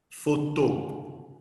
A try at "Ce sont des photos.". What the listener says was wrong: No, don't say the last S.